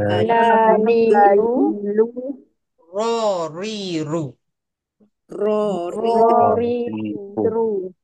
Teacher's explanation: Jadi ra tu ada sifat takrir, ada bergetar contohnya.